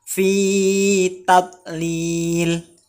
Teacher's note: Fi dibaca panjang mat tabi'i, lil dibaca panjang mat tabi'i.